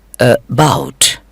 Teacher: about کے start میں جو کی ساؤنڈ آئی ہے وہ بہت ہی مختصر ہے. یہ ساؤنڈ شوا کہلاتی ہے.